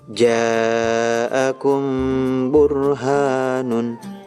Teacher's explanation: setiap mim sukun bertemu dengan huruf ba dibaca samar disertai dengung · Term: Ikhfa syafawi